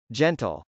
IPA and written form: dʒˈɛntəl (gentle)